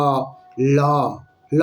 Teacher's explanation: জিহবাটা ঠেকে যায় আর দুপাশ দিয়ে বাতাসটা বেরিয়ে যায় এজন্য একে বলা হয় পার্শ্ববিক ধ্বনি ল ধ্বনিকে বলা হয় পার্শ্বিক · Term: পার্শ্বিক ধ্বনি